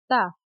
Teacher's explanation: ثنایا اولیہ کی نوک سے یا جڑ سے اگر ہماری زبان کی نوک لگی تو اسے تا ادا ہوتا ہے